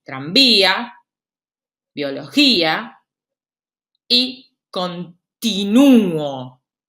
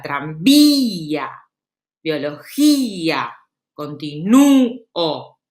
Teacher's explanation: Fíjense que las cerradas, que van a ser la I y la U, tienen la acentuación de la palabra. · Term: hiato